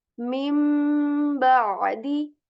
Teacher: Let's see what changes in this rule is that if after noon sakin or tanween comes letter ba, then we change the sound of the letter noon to meme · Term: iqlab